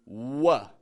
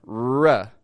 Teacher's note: when we pronounce an R at the start of a word, like a R, we make a lip movement like a W, like W. Considering the lip movement to make a W and the movement to make an R, a stressed R, are both the same movement.